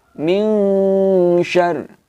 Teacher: Maksudnya, jelas di sini teman-teman, nun sukunnya ini kita baca tapi dengan setengah saja. Ketika kita sampai membaca di huruf nunnya, minnya di sini, mulut sudah siap melafadzkan huruf sya. Sehingga kemudian teman-teman bunyinya adalah min syarr. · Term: ikhfa